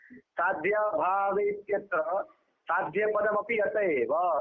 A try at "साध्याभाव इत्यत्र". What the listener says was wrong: साध्याभावे इत्यत्र कौन अलग पढ़ाता है तुमको, अरे साध्याभावे इत्यत्र कैसे बनता है भाई, तो फिर साध्याभावे बोल रहा है, फिर इत्यत्र बोल रहा है, कौन सा संधि कर रहे हो तुम, सही से पढ़ो ना भाई, क्यों डांट आपने को टोकना पड़ रहा है छोटी छोटी बातों में।